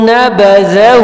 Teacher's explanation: زال جو ہے وہ زبان کی نوک سے ادا ہوگا